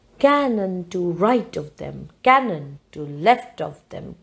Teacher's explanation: you get this structure, stress, unstress, unstress. Dactylic.